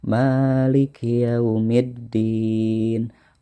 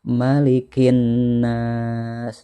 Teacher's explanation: tidak ada huruf ataupun hukum tajwid dari mad tabi'i ya, semuanya dipendekkan.